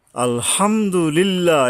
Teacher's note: এ লিল্লাহর উপরে এক আলিফ টানতে হবে।